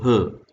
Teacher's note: there is no friction involved in the oral cavity, but the friction takes place in the glottis. So it is produced by the vocal cords. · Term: glottal